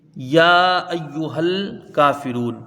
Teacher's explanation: یا کے اوپر کھڑا زبر ہے، اس کو کھینچ کے پڑھا جائے گا اور یہ الف مدہ کے برابر ہوتا ہے